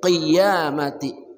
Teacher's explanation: qaf dari pangkal lidah